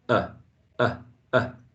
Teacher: Your tongue is not going down, it's not going up, right? It's almost central, mid-central, a little bit lower than the schwa. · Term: wedge